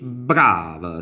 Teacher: con la b come forte nella pronuncia è brava quindi c'è un rafforzamento consonantico